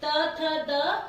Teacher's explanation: ठीक, तवर्ग की बात करेंगे तो ऊपर त थ द, ये हमारे ऊपर वाले दांत के जड़ में जाके लगता है। तो देखिए इसको बोलते हैं दंत्य